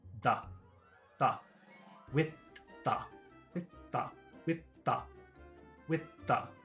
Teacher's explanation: it's a th sound with no air it's like a d it's like if you said kid but move your tongue here